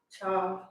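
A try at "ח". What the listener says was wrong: Not slugget, no, not cha, Ha, It's just a little bit, like I said, it's a little softer. It's a little bit more in here.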